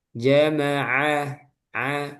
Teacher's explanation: Jama'a ma ja jangan keluar udara ja bukan ja yang benar ja jama'a a ditekan tengah tenggorokan ya